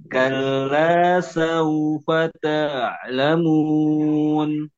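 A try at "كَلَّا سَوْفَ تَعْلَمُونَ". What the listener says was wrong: Oke, pada ain sukun tidak diayun ya. Langsung nempel ke ainnya. Kalla saufa ta.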